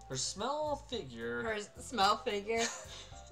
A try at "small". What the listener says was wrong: Pronounced small, not smell.